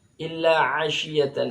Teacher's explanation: a ini tempat keluarnya sama dengan ha, tenggorokan tengah